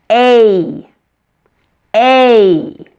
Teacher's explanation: Our long vowels are also tense, meaning that the muscles of your mouth, your face, and your tongue are tense as you say these vowels